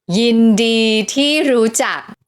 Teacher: Mid-tone, mid-tone, falling tone, high tone, and low tone.